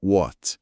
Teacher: W com som de U, esquece o H, e o T no final quase não fala